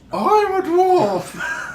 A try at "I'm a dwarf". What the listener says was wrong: That's too high.